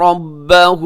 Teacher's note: رَبَّهُ آخر میں الٹا پیش ہے، آپ نے تھوڑا سا اس کو کھینچ کے پڑھنا ہے اور را کے اوپر زبر ہے تو را پر پڑھی جائے گی.